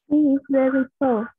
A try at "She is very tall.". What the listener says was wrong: Very good. She's very tall.